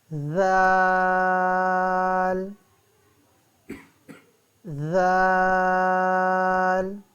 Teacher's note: زبان کی نوک اوپر والے دانتوں اور نیچے والے دانتوں کے درمیان میں رکھیں تو ذال ادا ہوتا ہے